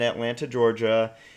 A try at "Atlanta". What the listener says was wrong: It's Atlanta. You don't pronounce the T.